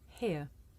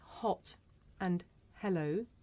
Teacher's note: the last english fricative is voiceless this is a voiceless consonant it makes very little sound because it's really just your breath you can hear it at the beginning of the word here